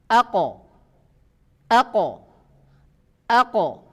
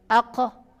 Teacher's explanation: Artinya tidak mengalir keluar, suara itu tertahan, terputus. Kemudian tidak mengeluarkan nafas, ya. Kalau kita perhatikan tidak mengeluarkan nafas. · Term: qaf sukun